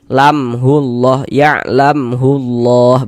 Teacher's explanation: Maka ini izhar syafawi. Maka dibaca jelas tak berdenggung.